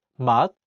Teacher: the 시옷 is in the 받침 position, so it's pronounced as 트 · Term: t sound